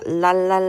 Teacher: 그다음이 밖에도 혀끝을 잇몸에 가볍게 되었다가 떼거나 혹은 혀끝을 잇몸에 댄 채 공기가 어떻게 돼? 혀의 양옆으로 내보내지면서 공기가 엄청 흘러나온다. 그래서 그렇게 랄르 와르를 쏟아져낸다. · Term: 유음